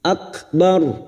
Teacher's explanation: Huruf ro yang dibaca waqaf dan didahului fathah kita baca tafkim.